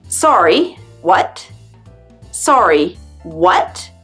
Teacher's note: sorry what with your intonation going up